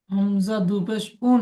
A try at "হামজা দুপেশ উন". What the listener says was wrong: হামজা টান হয়ে যাচ্ছে।